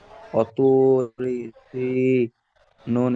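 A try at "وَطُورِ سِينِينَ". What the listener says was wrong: ওয়াতুরি সি, সিন ইয়াজি সিয়া মাদ্দা টান একালিফ সমান টানাবে, যেমন ও তু, তু টান দিলেন ও মাদ্দা, এখানে ইয়া মাদ্দা একই টান দিতে হবে। ওয়াতুরি সিনিন।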